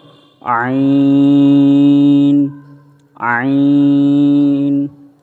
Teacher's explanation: আইন বলার সময় আমরা গলার মধ্যভাগ থেকে আমরা চাপ দিয়ে টানে নিয়ে আসব আইন, আইন, আইন। এবং আইন বলার সময় আমরা 4 আলিফ টানব